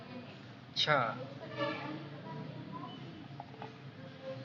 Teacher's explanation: Cha is voiceless alveolar affricate.